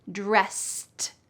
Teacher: Notice at the end of the word dressed, it sounds like a T, even though it's ED.